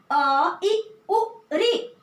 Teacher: इनके भेद हैं 3, कौन से, ह्रस्व, दीर्घ और प्लुत। तो ह्रस्व जिनके उच्चारण में एक मात्रा का समय लगता है या 1 गुना समय लगता है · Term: ह्रस्व स्वर